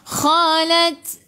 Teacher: Khalat. Okey, ta sifat hurufnya hamas kena ada sedikit sahaja angin, jangan banyak.